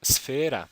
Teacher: the combination of the unvoiced alveolar fricative s and the unvoiced labiodental fricative f